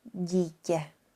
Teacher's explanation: in the case that the I is written in front of the D, T, N consonants and also it has a long sign you will pronounce it both softly and longer